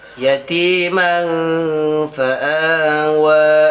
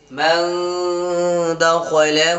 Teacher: نون کی آواز کو ناک میں چھپا کر پڑھیں گے۔ جیسے یتیمن فآوا، میم نون زبر من، دال زبر د، من د، خا زبر خا، من دخ، لام زبر ل، من دخل، ہا الٹا پیش ہو، من دخلہ، تو من دخلہ میں کیا ہوگا؟ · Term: اخفا